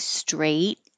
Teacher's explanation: you won't hear the final T straight unless there's a vowel after it